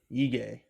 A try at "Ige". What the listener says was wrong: Or try to say it like Ihe, maybe, but just like a little G sound, like Ige. Ige.